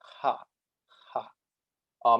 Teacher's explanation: it's like a rolled r but it's sort of like pronouncing an h at the same time so you're expelling air while you say it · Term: voiceless r